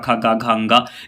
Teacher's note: क वर्ग के जितने भी अक्षर आते हैं क ख ग घ अ ये सब जो उच्चारण स्थान इसका होता है ये कंठ होता है